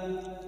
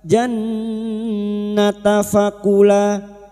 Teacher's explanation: Nun yang bertasdid gunna musyaddadah kita dengungkan selama tiga harakat.